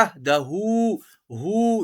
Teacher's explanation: ہا کے اوپر چھوٹی سی مد منفصل، یہاں تھوڑا سا کھینچ کر پڑھیں گے.